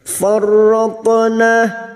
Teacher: Farratna tok sukun yang mati asri di tengah kalimat, qalqalah sugro jangan lupa dipantulkan. Farratna, na fathah diikuti alif 2 harakat matabi'i.